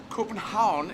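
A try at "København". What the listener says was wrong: no n at the end no n sound so coupe and how oh yes the end is there but it's slightly swallowed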